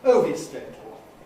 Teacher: Where's the stress? On the first syllable.